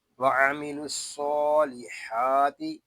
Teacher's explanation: صاد حروف مستعلیہ میں سے ہے، اس کو پر پڑھیں گے۔ صاد اور حا کے اوپر کھڑا زبر ہے، ان دونوں حروف کو ہم ایک الف تک کھینچ کر پڑھیں گے۔ · یہاں دونوں الف اور لام نہیں پڑھے جا رہے، لام کو ہم صاد کے ساتھ ملا دیں گے۔ صاد حروف مستعلیہ میں سے ہے، اس کو پر پڑھیں گے۔